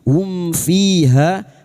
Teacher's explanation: Sukun mim dibaca dengan jelas tanpa bersenandung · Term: idhar syafawi